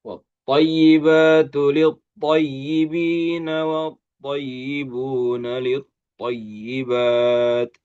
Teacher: Huruf th itu adalah huruf yang tebal ya. Huruf tebal dan dia itbaq ya